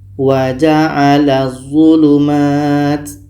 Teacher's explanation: Bunyi la masuk ke za dan tidak boleh dengung. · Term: idgham syamsiyah